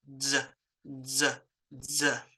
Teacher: And when you're making this sound, you should be making like the D, but also you're following it up with that Z. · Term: D raised Z